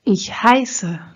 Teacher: le H allemand est un H dit aspiré, même si lorsque vous le prononcez, vous aurez plutôt l'impression de soupirer.